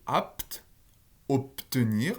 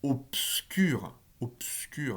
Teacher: phonétiquement, c'est bien un pe. Il n'y a aucun be à cet endroit-là.